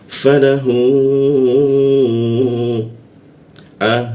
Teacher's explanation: Nah, hu ini hu-nya panjang bertemu alif. Nah, tanda panjang bertemu alif maka muncul bendera dipanjangkan di huruf ha-nya tiga ketukan ya